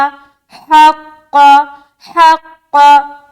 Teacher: قاف کو جب ہم چھوڑیں گے زبر کے ساتھ تو موٹا چھوڑیں گے کیونکہ قاف موٹے حروف میں سے ایک ہے.